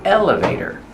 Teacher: Put the stress on the first syllable. Elevator. And the T is pronounced as a fast D.